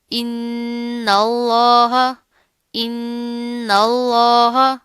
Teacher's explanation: اب یہاں پر کیا نون کے اوپر تشدید آ رہی ہے، غنہ کریں گے، جما کر مضبوطی سے پڑھیں گے، پیچھے والا جو حمزہ ہے اس نون کے ساتھ مل جائے گا، ٹھیک ہے؟ اور لفظ اللہ سے پہلے چونکہ زبر آ رہی ہے، لفظ اللہ موٹا پڑا جائے گا، لیکن اس چیز کا خیال رکھنا ہے کہ نون کو ہم موٹا نہیں پڑھیں گے، نون باریک ہوگا، اللہ موٹا ہوگا.